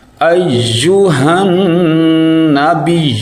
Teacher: نون کے اوپر ہم غنہ کریں گے اور یا کو تھوڑا سخت پڑھیں گے کیونکہ اس کے اوپر شد ہے ، اور جس حرف کے اوپر شد آ جائے وہ 2